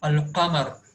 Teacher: here lam is not omitted because of the next alphabet to the letter lam is from moon letters, that is huruful qamariya.